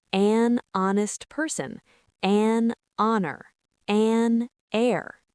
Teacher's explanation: the H is silent, so they start with a vowel sound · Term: silent H